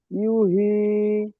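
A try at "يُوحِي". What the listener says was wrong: ইউ টান দিতে হবে না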